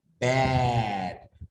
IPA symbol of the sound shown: æ